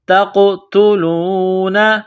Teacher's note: ہؤلاء تقتلون، تا کو قاف کے ساتھ ملائیں گے، قاف کو موٹا کریں گے۔ قاف ساکن ہے تو یہاں قاف پر قلقلہ کریں گے، جھٹکا دیں گے۔ · نون ساکن کے بعد فا ہے تو یہاں پر غنہ کریں گے، آواز ناک میں چھپائیں گے۔ انفسکم، سین میں سیٹی کی آواز پیدا کریں گے، سین کو باریک کریں گے۔